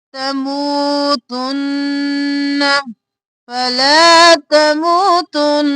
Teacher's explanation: نون پر تشدید ہے گننا، نون دو بار